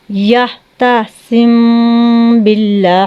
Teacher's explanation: غنہ کر کے تھوڑی سی آواز کو گھما کے پھر آگے پڑھیں گے